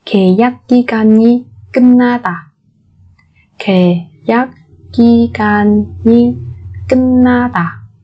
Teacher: Ở đây chúng ta có biến âm nguyên âm dê đọc thành e, bởi vì phía trước của nó là phụ âm khi dọc.